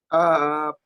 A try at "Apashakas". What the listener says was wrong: Just a little bit more of sort of emphasis or striking on the apashakas. Apashakas. Apashakas. Just need a little more work on the apashakas.